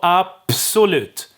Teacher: unvoiced the s is unvoiced so the b the b gets it turns into a p because s is unvoiced